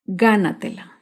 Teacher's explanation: Gánatela se acentúa en la sílaba anterior a la antepenúltima sílaba. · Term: palabras sobreesdrújulas